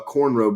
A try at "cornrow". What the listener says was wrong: I've never heard nobody pronounce cornrows like you saying it. Like you saying corn entirely, and that's so funny to me. Cornrows.